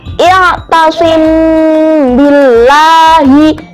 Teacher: Jadi bacanya itu disamarkan di bibir. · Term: ikhfa syafawi